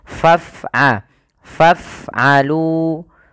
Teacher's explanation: Ya, tapi dia matikan dengan f, faf, bukan faf'alu juga dengan p. Tapi alirkan nafasnya ketika melafalkan fa.